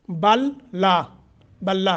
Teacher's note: لام کو لام نے مدغم کر دیا، ٹھیک ہے، بلا بن گیا۔ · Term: ادغام